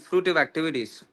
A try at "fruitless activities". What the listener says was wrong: Prabhu, you said fruitive activity, it was fruitless activity.